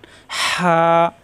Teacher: হা খাড়া যাবর হা, খাড়া যাবর খাড়াদের উল্লেফেশ মাদের হরফ একালিপ টান, এখানে একালিপ টান। হা কণ্ঠনালীতে চাপ দিয়ে একালিপ টান